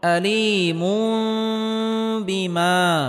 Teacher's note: আযাবুন তানবিনের পরে ইকলাবের হরফ বা আসার কারণে এখানে ইকলাব গুন্নাহ করে পড়তে হবে, অর্থাৎ তানবিনকে ছোট মিম দ্বারা পরিবর্তন করে পড়তে হবে